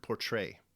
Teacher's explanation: the first syllable poor is unstressed while the second syllable Trey is stressed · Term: stressed syllable